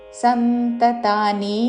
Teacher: సంతతాని అని దీర్ఘము కాదు సంతతాని చివరిలో నీ హ్రస్వము